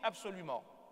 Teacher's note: Or, ce n'est pas vrai, on ne dit pas B, on dit P.